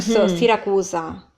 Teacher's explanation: when the S is between 2 vowels, you would just tend to, you know, turn into a Z sound a bit more.